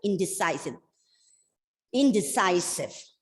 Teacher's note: the stress is on the second last syllable